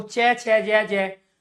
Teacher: आपके मुख के अंदर जो जीभ है वो तालव्य का स्पर्श कर रही है